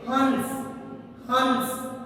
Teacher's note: अनुस्वार जैसे हमने शब्द लिखा हंस, अनुस्वार का प्रयोग करते समय, उच्चारण करते समय हमारे मुख से जो ध्वनि निकलती है, तो ध्वनि के साथ साथ नाक से इसका उच्चारण होता है।